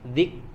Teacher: huruf kaf di sini ada hams ya, ada hams tapi tetap tadi huruf kaf juga punya sifat syiddah. Jadi tahan dulu, lepaskan baru keluar hamsnya. Zik ya, harus ditahan dulu.